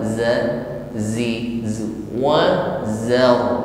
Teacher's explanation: Za, untuk huruf zai, sentuh ujung lidah ke gigi seri bawah. Atribut yang menyertainya adalah safir, yaitu suara siulan. Bunyi siulan terasa di ujung lidah. Namun, siulan ini hanyalah suara, zi.